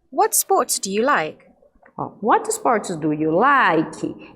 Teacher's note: Esse like está caindo a entonação.